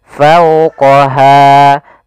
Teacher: Fau, di sini ada bacaan lin, yaitu adanya fathah bertemu dengan huruf waw, maka dia dibaca dengan lembut.